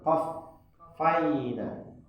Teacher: Letak penekanan itu pada huruf fa-nya